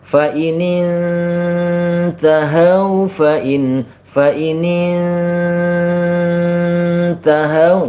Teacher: Jadi panjang ikhfa-nya itu lebih lama daripada panjang masuknya ke ta.